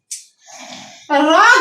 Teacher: র যখন আমরা উচ্চারণ করি দেখো জিহ্বা আমাদের কম্পন হয়, কাঁপতে থাকে, এই জন্য কম্পন জাত।